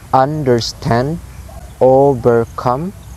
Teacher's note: 2 low sound followed by high sound, 2 unstressed syllables followed by 1 stressed syllables. · the pattern here is low, low, high, like da, da, dum, da, da, dum. · It's like low, low, high, low, low, high. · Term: anapest